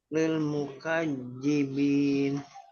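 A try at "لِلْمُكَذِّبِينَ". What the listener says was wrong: Jangan pakai J. Mukajibin. Mukadzibin. Coba. Mukadzibin.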